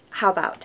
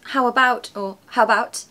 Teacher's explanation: we're taking away that vowel at the beginning of about just to make things quicker